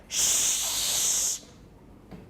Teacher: and resonant ah we have a very clear pitch but Shh it's in a very very high part of the range but it's scattered over a very large part of that high part of the range